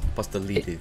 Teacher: the D sound is like almost like a TH sound. It's yes, like a light TH sound.